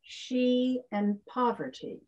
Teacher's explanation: So she is stressed, the ty in poverty is not.